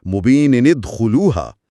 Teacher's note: मुबीिनन का नून जाहिर होकर ने बनेगा और अगले साकिन हर्फ दाल से मिल जाएगा। नतीजा होगा मुबीन खुलूहा यानी मुबीनद खुलूहा।